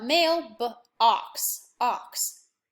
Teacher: the oh is not saying oh it's saying ah so I know that's a short vowel